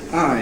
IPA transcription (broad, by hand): æɪ